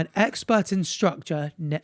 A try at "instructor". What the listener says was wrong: You keep saying structure.